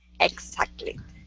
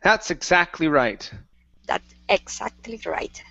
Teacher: Give me a little bit more K sound in that X